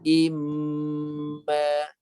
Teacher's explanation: Bibir rapat pula. Bibir rapat, suara tolak ke hidung dan gunakan keseluruhan hidung. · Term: Mim bersabdu